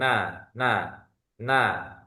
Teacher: salah satu huruf gunah yakni di ujung lidah yang dekat dengan gusi gigi seri atas · Dia memiliki sifat jahr ketika mengucapkan tidak ada angin yang keluar ya. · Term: huruf nun